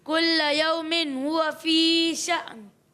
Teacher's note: جھٹکا دینا ہے لیکن نون کی آواز آنی چاہیے، نون پہ ختم کرنا ہے